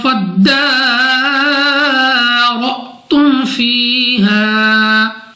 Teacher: ہے، را پر زبر، را کو پر یعنی موٹا پڑھیں گے، حمزہ ساکن کو ہمیشہ جھٹکا دے کر پڑھتے ہیں